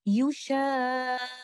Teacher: the tasadum or the collision of the sakin letter qaf was either weak or missing. That's why the letter is pronounced with a weak sound to such a degree that it may not even be heard.